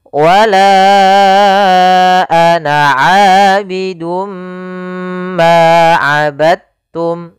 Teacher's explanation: Maka cara membacanya yaitu masukkan huruf dalnya kepada huruf ta.